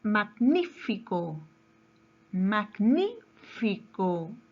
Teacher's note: su mayor fuerza de voz está en la antepenúltima sílaba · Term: palabra es brújula